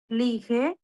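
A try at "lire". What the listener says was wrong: না, লিখে না, লিখ, লাস্ট লেটার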